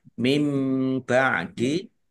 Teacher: nun sukun bertemu dengan huruf ba, bacaan iklab dibaca membalik ya, nunnya dibaca mim